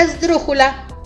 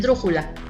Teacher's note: las palabras esdrújulas que son las que tienen su sonido más fuerte en la ante penúltima sílaba o sea qué es digamos la tercera del final hacia el